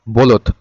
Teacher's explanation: ওকারটা না দিলেও কিন্তু আমাদের উচ্চারণের সময় কিন্তু এখানে সবগুলাই শেষে ওকার উচ্চারণ হয় · শেষে কিন্তু ওকারের মত উচ্চারণ কিন্তু থেকেই যাচ্ছে বা ও এর উচ্চারণটা কিন্তু থেকেই যাচ্ছে।